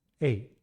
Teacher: using the short flat tone with each of them before the consonant sound t cuts off the vowel